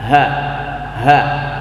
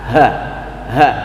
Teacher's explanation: Nah, kemudian yang disebut batas dalam itu adalah ini. Tenggorokan bagian bawah, tempat keluarnya huruf ha.